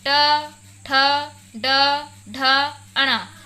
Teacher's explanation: इन 5 वर्णों के उच्चारण से निकलने वाली प्राणवायु मूर्धा को स्पर्श करती है, जिस कारण इन वर्णों को मूर्धन्य वर्ण भी कहते हैं।